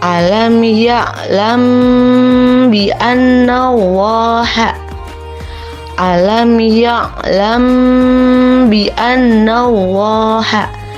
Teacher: Cara membacanya ditahan kira-kira 2 harkat seraya mengeluarkan suara ikhfa.